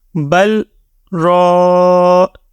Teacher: را زبر الف را. را کے لیے موٹی آواز بھی نکالیں گے اور اس کو لمبا بھی کریں گے کیونکہ الف کے پہلے زبر ہے، ٹھیک ہے، یہ الف مدہ ہے.